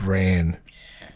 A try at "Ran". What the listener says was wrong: It's Ran. Itchy Ran. Ran. Ran.